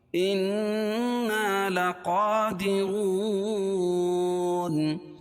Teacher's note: انا، الف سے پہلے زبر ہو تو الف مدہ، لقا کھڑا زبر قائم مقام الف مدہ کے، اس کو 1 الف کے برابر کھینچ کے پڑھیں گے